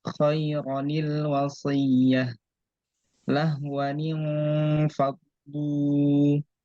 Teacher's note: Ya, itu kaidahnya setiap tanwin jika bertemu dengan alif, maka cara bacanya tanwinnya tidak dibaca tanwin, tapi dibaca biasa, tanwinnya hilang dan ditambah dengan nun kasroh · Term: nun iwad